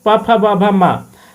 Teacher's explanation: पवर्ग का उच्चारण कहाँ से होता है? तो ओष्ठ से होता है